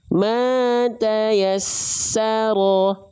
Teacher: Karena bukan ditahan kalau selain nun dan mim, tapi cukup ditekan. Ketika ditekan huruf sin itu akan mengalir sifat sofirnya, sifat mengalir nafasnya, sifat mengalir suaranya.